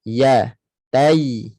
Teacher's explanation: Tengah lidah naik betul-betul. Naik ke tengah langit. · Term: makhraj ya